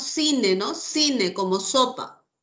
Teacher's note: por dialecto O sea la variante que nosotros hablamos del Castellano aquí en Perú en América existe ese fenómeno del ceseo